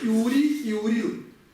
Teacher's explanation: Л иногда произносится, иногда не произносится, поэтому она может звучать и ури, и урил